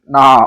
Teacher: நாவின் நுனி மேல்வாய் பல்லோட அடிப்பகுதியை தொழுவதால் நகரம் தோன்றுகிறது